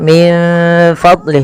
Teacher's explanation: Kita membacanya menyamarkan nunnya kepada huruf fa